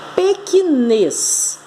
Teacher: Por que ela é oxítona? Porque a última sílaba é a mais forte. O acento está na última sílaba.